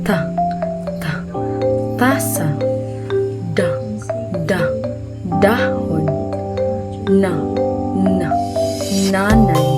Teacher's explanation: Sunod naman ay pangipin. Ang dulo ng dila ay dumidikit sa likod ngipin o sa gilagid.